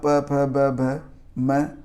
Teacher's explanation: ओष्ठ वर्ण मतलब दोनों ओठों के स्पर्श से बोले जाने वाला जो वर्ण होता है, जैसे कि ऊ हो गया, प वर्ग हो गया मतलब प फ ब भ म, आ कंठ वर्ण और ई तालव्य वर्ण है।